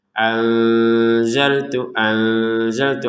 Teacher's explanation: nun sukun bertemu dengan zai maka kita bacanya dengan samar ya